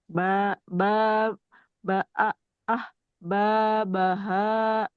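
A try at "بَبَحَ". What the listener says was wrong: Haknya enggak ha, tapi ha, ha. Ah. Ah, babaha. ya, Bu, masih ketahan dikit sih. Jadi kayak belum lepas gitu haknya. Ya, ogah-ogahan gitu. Ah, ah. Ahnya agak panjang.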